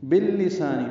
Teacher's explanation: نون کی جگہ میم پڑھیں گے، باللسانی با کو لام سے ملانا ہے، سا الف مدہ ہے، دو حرکات لمبا ہے